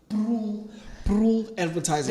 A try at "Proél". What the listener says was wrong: No, Proél. the accent on the E. I'm glad you said that, but it's Proél.